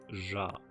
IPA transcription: ʒa